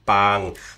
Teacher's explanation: The common tone in Thai is normal voice, and it kind of just dies off at the end, but it stays level for a bit.